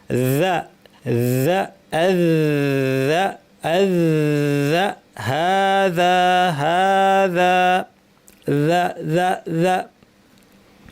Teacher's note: ভোতা আওয়াজ, বাতাস বন্ধ, আওয়াজ জারি · হ্যাঁ, ফালইয়াবুদু রব্বা হাযাল, হা উপরে একটা ছোট আলিফ টানতে হবে, হা যাল, যাল বাইত, জালটা দেখে নেই একটু, এ দেখেন কোথায় জিহ্বাটা লাগছে, জিহ্বার শীর্ষ থেকে একটু ভিতরের অংশ, এটাকে বলা হয় তরাফুল লিসান, এই জায়গাটা উপরে দাঁতের শীর্ষে লাগিয়ে